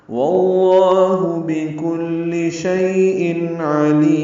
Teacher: شیء ان میں تنوین کے بعد عین آنے کی وجہ سے اظہار ہے، عین وسط حلق سے ادا ہوگا، لام کو لمبا کریں گے اور میم ساکن پہ اظہار ہوگا. وقفاً مد عارض سکون ہے اور میم ساکن پہ ہونٹ بند کر لیں گے